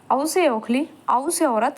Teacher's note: कंठोष्ठ्य, जो गले और ओष्ठ से बोले जाते हैं